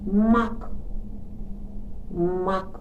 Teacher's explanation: м приголосний бо ми закриваємо стуляємо губки коли його вимовляємо